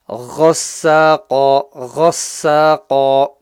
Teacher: The ghain needs to be read clearly, guttural sound from the top of the throat.